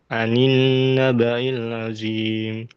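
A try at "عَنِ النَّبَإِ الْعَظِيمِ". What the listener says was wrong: A-nya, A-nya kurang ya. A itu di tengah-tengah tenggorokan. Anin naba'il azim.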